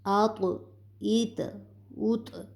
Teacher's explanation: یہ حرف کلکلا ہے، اس پر بھی ہم آواز کو حرکت دیں گے